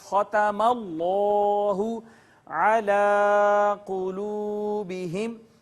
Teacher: اس میں جلالت اللہ سے پہلے فتحہ ہے، زبر ہے، لہٰذا اس کو پر کر کے پڑھیں گے